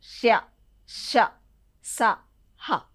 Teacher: అంటే గాలి బయటకు వస్తుందన్నమాట అంటే ఊదుట వల్ల పలకబడతాయి కాబట్టి అవి ఊష్మాలు